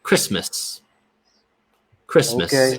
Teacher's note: the schwa sound is basically it's basically the short u sound. Uh, but it's really short.